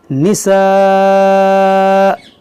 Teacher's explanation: یہاں پر دیکھیں وقف مطلق کی علامت ہے، یہاں پر وقف کریں گے تو یہ حمزہ ساکنہ ہوگا تو اس میں جھٹکا ہوگا